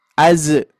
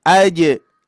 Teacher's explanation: Tengah lidah, hati-hati, bukan ujung lidah, Pak, Bu. Kalau ujung lidah nanti jadi zai.